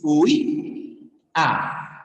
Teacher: tienes una cerrada con una abierta. Y la cerrada lleva fuerza de voz. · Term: hiato acentual